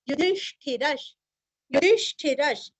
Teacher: विसर्ग का उच्चारण आधा श, युधिष्ठिरश, युधिष्ठिरश।